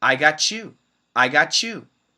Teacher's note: if we have a t next to a y we can make it into a ch sound